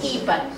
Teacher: it's fourth tone followed by a third tone.